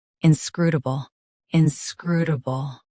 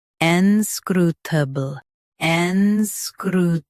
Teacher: US starts with in. UK starts with ain.